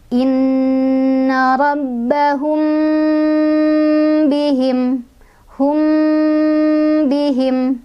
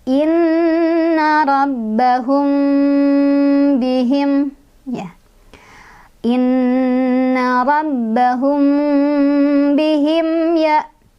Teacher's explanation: Ini boleh dengan 2 cara, boleh rapat bibir atau boleh renggang sehelai kertas. Contoh yang rapat, inna rabbahum bihim, hum bihim, ya dengungin sampai kerasa ke hidung. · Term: ikhfa syafawi